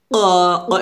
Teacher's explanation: কফটা যখন উচ্চারণ করব জিহ্বার গোড়া তার বরাবর উপরে তালুর সঙ্গে লাগিয়ে উচ্চারণ করতে হবে। আর এটা নিয়ম হচ্ছে যখন আমরা কফ উচ্চারণ করব আমরা কি করব, কফটা মোটা করবে, ক ক এভাবে একটা শব্দ বের করে উচ্চারণ করতে হবে, কফ।